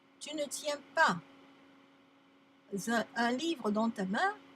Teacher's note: I want you to sound every word by itself. No more liaison.